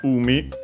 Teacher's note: umi, which on its own means sea. Accented on the first syllable, yes it is.